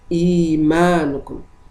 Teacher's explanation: The mad letter, the hamza, was exchanged with mad letter, and the duration of mad is 2 vowel counts. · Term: mad al-badal